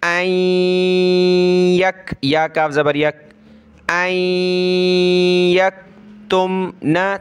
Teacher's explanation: नून साकिन, उसके बाद वाले वर्ड पे ये तशदीद है तो नाक में आवाज़ पैदा करेंगे